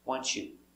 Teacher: together the T makes a ch sound